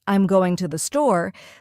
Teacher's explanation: the stress naturally falls on going and store. The smaller words like I'm and to the R less emphasized and spoken quickly. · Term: stress pattern